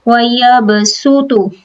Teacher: یہاں پر صاد کو جو ہے ہم سین ادا کریں گے